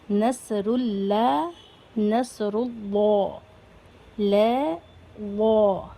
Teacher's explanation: لفظ اللہ کے لام کو موٹا کر کے پڑھتے ہیں، ہیوی ساؤنڈ کے ساتھ پڑھتے ہیں. نیچے یہاں پر لکھا ہوا ہے لفظ اللہ کے لام سے پہلے اگر زبر یا پیش ہوگا تو لفظ اللہ کے لام کو موٹا پڑھیں گے.